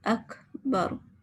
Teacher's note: یہ کاف کے آگے ایک آواز آتی ہے نا، اس کو ہمس کہتے ہیں، یعنی ہمارے سانس کی آواز ہے۔